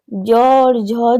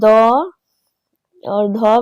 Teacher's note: हमारी स्वर तंत्रिया जो है उसमें कंपन होता है, झंकृत होती है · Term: घोष ध्वनि